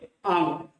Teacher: अंग को अनुस्वार कहते हैं। इसका उच्चारण हम नाक से करते हैं।